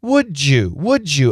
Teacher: So, what about D + Y? D plus Y equals J. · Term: J sound